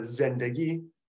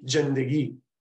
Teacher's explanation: have what in Persian is a z sound expressed as a j sound